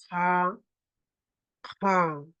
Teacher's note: Este es sonido fuerte, ¿ya? Sonido fuerte, un poco como que te raspa la garganta, parecido o sea, un poquito semejante a ga.